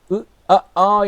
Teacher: ஆ என்று சொல்கிறப்ப நாக்கினுடைய இடைப்பகுதியில் அந்த சத்தம் வரும்.